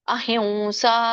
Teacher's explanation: ಸ ಇರುವ ಕಾರಣ ಅಲ್ಲಿ ವ ಬರುತ್ತೆ ಮೂಗಿನಿಂದ ವ ಹೇಳಬೇಕು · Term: ಅನುಸ್ವಾರ